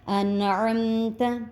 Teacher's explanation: نون ساکن کے بعد حرف ہلکی میں سے عین آیا اس وجہ سے ہم غنہ نہیں کریں گے تو ہم اس کو سیدھا سیدھا ہی پڑھ جائیں گے.